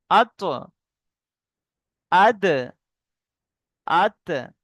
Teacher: সামনের দুই দাঁতের গোড়ার সঙ্গে লাগবে, লেগে উচ্চারণ হবে